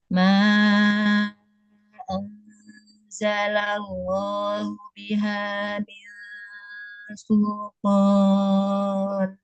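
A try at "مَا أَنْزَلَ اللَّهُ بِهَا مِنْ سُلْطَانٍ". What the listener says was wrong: Ma anzalallah dan lam, lam. Jangan ditekan di huruf lam sebelum masuk ke sukun. Ma anzalallahu biha.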